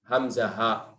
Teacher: Adnal halq, yang paling dekat ke arah paru-paru. Ini bagian bawah.